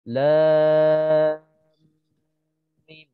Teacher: masuk ke dalam mim tu ada dengung kan, 2 harakat di situ. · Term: mad lazim harfi mutsaqqal